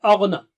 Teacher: Ghain is thick and high